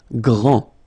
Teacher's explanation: G-R, gr, gr, gr. And then the nasal en.